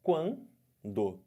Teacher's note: ditongo nasal som sai pela boca e sai um pouco de som pelo nariz olha o exemplo a palavra quando então quando que que aconteceu · Eu fiquei com o som de duas vogais, do A com o U. Só que esse A, vocês estão vendo que ele está nasalizado